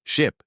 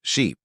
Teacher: Ship has a short I sound, while sheep has a long E sound.